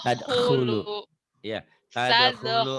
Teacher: ngorok ya, kha, kayak orang ngarehak